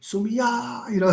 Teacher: I lengthen and I put pressure on the vowel, the last vowel